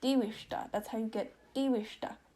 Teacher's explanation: Short vowel rule does not apply. That second I is short in between W and the S.